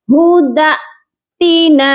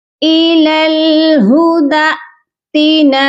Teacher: آپ نے دال کو حمزہ کے ساتھ جھٹکا دے کر پڑھنا ہے